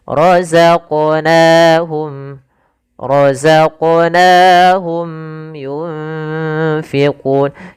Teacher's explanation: Misal roqnahum harusnya itu yang pertama. Keselahan kedua menambahkan hamzah misalnya rozaq. Rozaqnahum rozaq. Nah, harusnya mengalir.